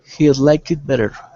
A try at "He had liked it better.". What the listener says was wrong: Like, pronounce that T. Liked it. He had liked it better.